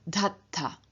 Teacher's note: with the reduplicative syllable aspirated, dh, and the dh at the end of the stem having lost both its voice and its aspiration, and therefore having changed to d.